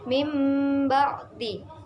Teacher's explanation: Apabila ada nun mati atau tanwin bertemu dengan huruf ba maka keduanya diganti dengan huruf mim Tetapi hanya dalam pelafalan bukan dalam penulisan contoh dari iqlab ialah